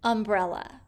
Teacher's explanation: notice the a at the end of umbrella also makes the uh sound this is not a short u sound this is a schwa sound